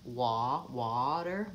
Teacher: because I have rounding with the wah it ends up shaping that vowel a little bit